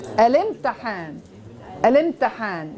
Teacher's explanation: You still have the vowel, but there's no actual hamza there. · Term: hamzat wasl